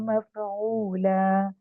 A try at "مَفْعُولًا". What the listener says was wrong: اور مفعولا نہیں آواز نہیں ہلنی چاہیے. مفعولا مفعولا.